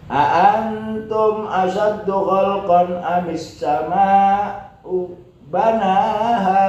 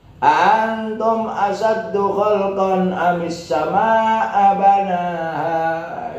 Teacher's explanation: Karena ada a-nya mesti istifham, maka bacanya itu di keataskan banaha. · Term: sakta